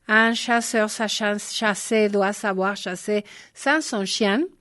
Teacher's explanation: emplea la consonante fricativa, postalveolar sonora y la sorda, que no están presentes en castellano.